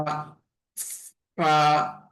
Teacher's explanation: দাঁতের মাঝখান দিয়ে আমাদের বাতাসটা বের করার মাধ্যমে ফা এর উচ্চারণটা হবে।